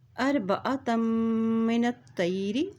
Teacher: ता की दो ज़बर को मीम के साथ मिलाते हुए पढ़ेंगे। मीम के पश्चात है और जब मीम के पश्चात आती है तो वहाँ पर भी गुना अदा किया जाता है।